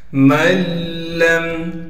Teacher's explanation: ملم، میم کو ڈائریکٹ اس لام سے ملا دیں گے، ادغام کے قاعدے سے نون ساکن کو ہم ختم کر دیں گے، میم کا لام میں بالکل ادغام کر دیں گے، لام کو پھر ہم میم ساکن سے ملائیں گے بغیر غننے کے۔